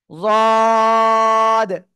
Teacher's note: জিহ্বার গোড়ার কিনারা উপরে মাড়ির দাঁতের গোড়ার সাথে লাগিয়ে আমরা এই অক্ষরটা উচ্চারণ করব, যদ। ঠিক আছে।